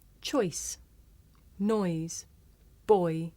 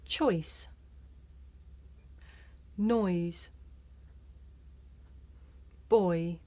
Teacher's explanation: a diphthong a double vowel sound the shape the mouth makes changes from the beginning of the word to the end it's pronounced oi did you notice how my mouth changed shape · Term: oi sound